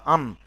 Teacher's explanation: যখন দুজাবার হয় তখন আওয়াজটা নাকের ভিতর চলে যায়, আন, তাহলে নাক আন বলবেন।